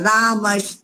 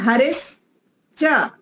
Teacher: हरिस च यहां पर भी तालव्य सकार के स्थान पर दं दंती सकार के स्थान पर तालव्य सकार हो जाएगा